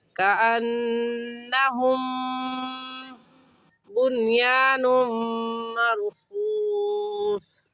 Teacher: نون مشدد ہے، نون مشدد پر ہمیشہ غنہ ہوتا ہے، اور ہم میں میم ساکن ہے اور میم ساکن کے بعد با آ گیا ہے، اور قاعدہ ہے کہ میم ساکن کے بعد با یا میم آ جائے تو میم ساکن پر غنہ کرتے ہیں، تو یہاں پر میم ساکن کے بعد با آ گیا، اس وجہ سے اس میم ساکن پر غنہ کریں گے